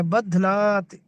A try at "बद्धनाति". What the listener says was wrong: बहुत बढ़िया, आगे